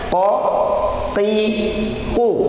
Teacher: Ketika membaca qaf tidak boleh keluar angin. Ko ki ku salah itu teh.